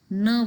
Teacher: nerve which is from alveolar ridge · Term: nasals